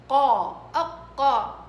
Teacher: أقصى اللسان مع الحنك إيش؟ الأعلى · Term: القاف